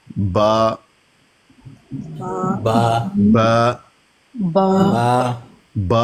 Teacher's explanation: با ہونٹوں کے تر حصوں سے ادا ہوتا ہے. ہونٹوں کے تر حصے ملیں تو با ادا ہوتا ہے.